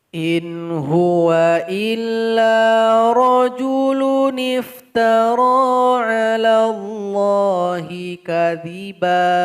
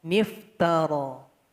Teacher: Dia sudah dibantu dengan baris kasroh. Cara membacanya, nun kecil ini yang sudah berbaris kasroh langsung kita masukkan ke huruf fa sukun. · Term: nun wiqayah